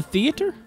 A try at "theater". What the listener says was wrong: I didn't realize you pronounced the A so much.